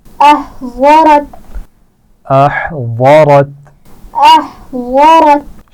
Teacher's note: ضاد کے مخرج کا خیال رکھیے، موٹا پڑا جائے گا